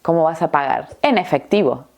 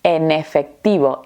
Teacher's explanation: Porque la primera palabra termina con la consonante n y la segunda palabra comienza con la vocal e. Lo vamos a unir todo junto. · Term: conectar vocales y consonantes